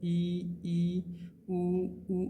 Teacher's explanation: जब इ उ आप जब बोलते हो तो मुंह जो है पूरा क्लोज होता है लगभग बंद हो जाता है मुंह का द्वार।